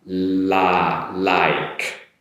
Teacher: Now for like, L sound, not an R sound. So tongue position behind the upper teeth, make the L sound. Like. So you get your la, make an E sound, like, and then followed with a K sound.